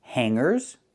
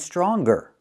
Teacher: Hangers with no hard g sound, and stronger with the hard g sound. These words look very similar, but they have different pronunciations.